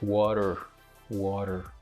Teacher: this is a voiced alveolar tap or flap